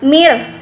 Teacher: nun mati berjumpa dengan ra, yaitu idgham bila gunnah, tidak berdengung